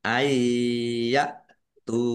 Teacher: nun sukun bertemu dengan huruf ya, bacaan idgham bi gunnah masuk dengan mendengung, yaitu masuk ke huruf ya, nun sukunnya tidak dibaca. Ayya tu ditahan ya.